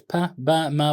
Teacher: occurs okay where the sound occurs babal consonants for example are produced by bringing both lips together